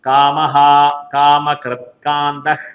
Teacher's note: വിസർഗ്ഗത്തിനു ശേഷം ക വരികയാണെങ്കിൽ അത് ഇഹക എന്നായി മാറും അപ്പോ ഹ എന്നുള്ള ഒരു ഉച്ചാരണം ശബ്ദം ചേർത്ത് ഒന്നുകൂടി നമുക്ക് നോക്കാം കാമഹ